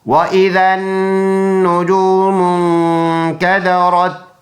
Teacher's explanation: نون مشدد ہے، ایک الف کی مقدار اس میں غنہ ہوگا، پکا غنہ